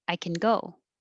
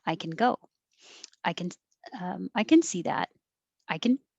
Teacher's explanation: you won't really hear the vowel at all and it gets shortened to can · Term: positive